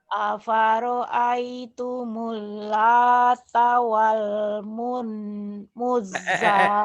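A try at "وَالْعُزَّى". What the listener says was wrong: Wal Uzza ain itu. Wal Uzza. Afara'aitumul Lata wal Uzza.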